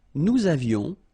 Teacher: little liaison, final S not pronounced